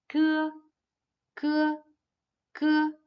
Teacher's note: It's an unaspirated voiceless velar plosive. The back of the tongue is raised to form a closure with the soft palate.